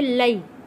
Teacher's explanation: یا ساکن ہے، یا ساکن سے پہلے زبر، حروف لین ہے۔ جلدی اور نرمی کے ساتھ پڑھیں گے۔